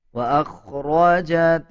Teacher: اذا زلزلت الارض زلزالها واخرجت الارض اثقالها، واخرجت حمزہ کو خوا کے ساتھ ملا کے پڑھا جائے گا، خوا موٹے حروف میں سے آتا ہے، خوا کو پر یعنی موٹا پڑھا جائے گا